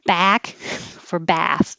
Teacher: Now a very big ah. Jaw is low, lips are back.